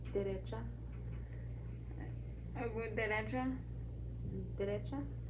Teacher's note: D is what we call dental because we use our teeth to create the sound of the D.